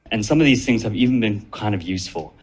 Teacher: Aí aqui, ele juntou o some com of.